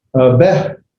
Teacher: The sago hey is still beh. Notice I've not pronounced the hey, the H sound. I don't pronounce the H sound. I'm just pronouncing the vowel sound because it's not an H.